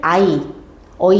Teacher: 애가 이중모음이었기 때문에 예전에 이제 발음을 어이, 이렇게 발음했을 것으로 추정이 돼요